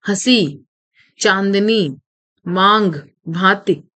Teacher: अनुनासिक यह चिन्ह शिरोरेखा के ऊपर चंद्रबिंदु के रूप में लगाया जाता है। इसका उच्चारण करते समय नाक और मुंह से समान दबाव के साथ वायु बाहर निकलती है।